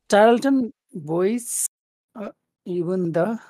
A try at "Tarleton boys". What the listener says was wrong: You're going boy? But boys, just go boys. Go down instead of up. Boys. Boys. Go down, not up. Tarleton Boys.